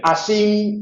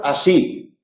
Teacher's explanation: esa n que cierra las las agudas es característica del occidente, del leonés, es decir, es muy común en león. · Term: n adventicia